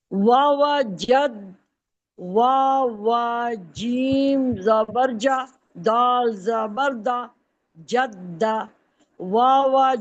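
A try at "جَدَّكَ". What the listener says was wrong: جدہ دال دیکھیں مشکل بناتی ہیں آپ. سیدھا سیدھا یہ جدہ کا مطلب ہے اس کے اوپر تشدید، اس کو ڈبل پڑھنا ہے، جبکہ دال سنگل پڑھا جائے گا، تشدید ہے ہی نہیں اس کے اوپر.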